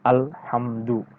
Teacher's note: makhroj atau tempat keluarnya dari huruf mim itu kan dari bibir bertemunya bibir atas dan bibir bawah itu makhrojnya tempat keluarnya huruf mim sebagaimana kita mengucapkan huruf M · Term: izhar syafawi